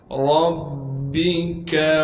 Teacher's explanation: تشدید ہونے کی وجہ سے با پر تھوڑا سا ٹھہراؤ کریں گے. کاف کو باریک کر کے پڑھیں گے.